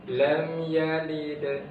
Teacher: Jadi yang di tengah itu namanya qalqalah sughra. Ada qalqalahnya tapi tipis.